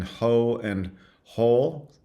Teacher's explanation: there is often a big difference in quality between the vowels in ho and whole